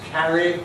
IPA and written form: ˈkæri (carry)